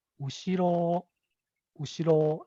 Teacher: So the last pattern is flat. So the pitch has a low starting point on the first syllable or two, and then it goes up slightly and then levels out. And there's no high pitch tone or accent within the word.